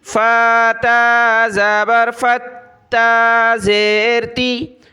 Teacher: تا کو سخت کریں گے تشدید کی وجہ سے ، فتا زبر فتا زیر تی، الف خالی ہے بیچ میں،